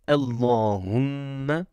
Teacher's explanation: Ici, nous avons un dédoublement de la lettre M en bleu, avec une runna. La runna est la nasalisation de la lettre M, mim. Elle sort de la cloison nasale et se traduit par des vibrations du nez.